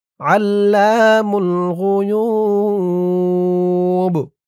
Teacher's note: দিয়ে এই বাকে ধরতে হবে, বার নিচে জেরটা সাকিন হয়ে যাবে, ৩ আলিফ টান মধ্যে আরজি, আর এই বাটা কলকলার হরফ হয়ে যাবে, ধাক্কা দিয়ে পড়তে হবে।